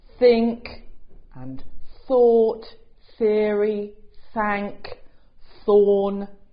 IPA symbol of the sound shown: θ